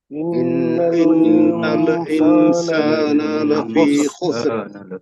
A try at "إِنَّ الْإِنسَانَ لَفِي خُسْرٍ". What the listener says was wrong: ہاں اب دیکھیے یہاں پہ لام پر قلقلہ ہو گیا، ان الانسان، ان الانسان ایسا نہیں ہونا چاہیے، لام پہ آواز بالکل آپ کی ٹھہر جانی چاہیے. ان الانسان، ان الانسان. ہاں إن الإنسان لفي خسر. خسر خسر را کو موٹا پڑھیں گے.